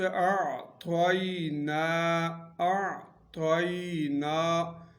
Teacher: لین، یعنی نرمی کے ساتھ آواز نکالیں گے، نرمی کے ساتھ، تا کو پر اور یا کو نرمی کے ساتھ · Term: یا لین